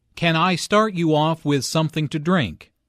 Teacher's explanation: Notice how the question starts with can. Since this is a yes no question, the intonation rises at the end.